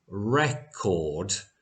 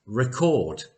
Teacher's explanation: So in the first word we have a longer vowel sound as in record and in the second word we have a shorter vowel sound on the e sound